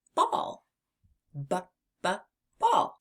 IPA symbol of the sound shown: b